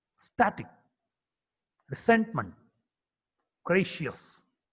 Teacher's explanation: S is a voiceless alveolar fricative consonant.